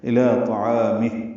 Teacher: حرکات لمبا ہے، وقفاً میم کو ہا سے ملا دیں گے، ہا ساکن ہو جائے گی اور اس میں ہمس ہوگا ، الی طعامہ، سانس جاری رکھے گی، کھڑی زیر ختم ہو